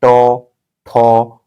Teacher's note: जब ट ठ ड को आप प्रोनाउंसिएशन करेंगे तो थोड़ा देखिए मुंह किस आकार में हो रहा है, और जीभ देखिए मुड़ रहा है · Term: मूर्धन्य